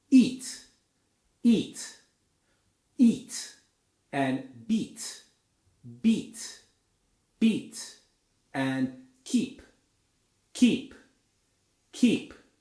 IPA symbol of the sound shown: i